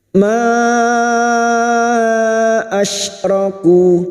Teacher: Ma asyraku, huruf shin lagi, huruf shin makhrajnya ada pada wastul lisan, yaitu tengah lidah. Dan huruf shin memiliki sifat hamas dan rokhawah, yaitu mengalirnya nafas dan suara.